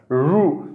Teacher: रु म्हटलं की मूर्धन्यकडे जिभेचा शेंडा चाललेला आहे